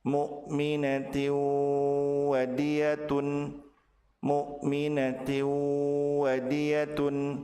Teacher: Apabila tanwin bertemu dengan wau, maka tanwin dilebur ke huruf wau, ditahan dua harakat dan disertai dengan gunah. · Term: tanwin bertemu dengan waw